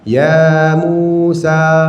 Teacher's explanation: Ya 2 harakat, mu 2 harakat, sa 2 harakat.